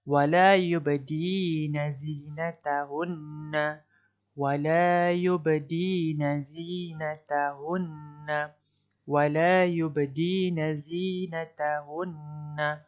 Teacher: nun ni perlu didengungkan dengan kadar dua harakat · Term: nun syaddah